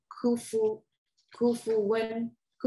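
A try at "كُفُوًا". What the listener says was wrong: not win. When? Yeah, not win. You want to be careful. You want to make that so open your mouth.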